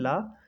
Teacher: जब हम ला का उच्चारण करते हैं तो उस समय हमारी जीभ जो है तालु में लग जाती है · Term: पार्श्विक व्यंजन